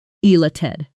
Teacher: Notice the stress on the second syllable.